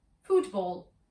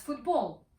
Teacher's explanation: in english the stress is on the first syllable which is pronounced at a higher pitch the second syllable is unstressed but it contains a long vowel